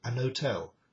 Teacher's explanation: it was pronounced an hotel with no h at all at the beginning.